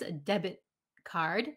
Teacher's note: when we speak quickly, the T at the end disappears, a debit card.